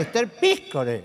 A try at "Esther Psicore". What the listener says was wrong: No, pi, no, pi, no, psi, psi.